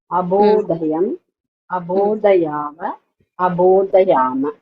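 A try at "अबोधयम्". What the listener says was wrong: Everywhere your dhakaras sounding as alpaprana. So universally across, you have to work on your pronunciations.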